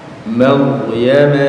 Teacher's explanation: Wa ummuhu ya, hati-hati kalau baca huruf sukun sama ro ya di Maryam itu ro-nya tafkhim, dibaca tebal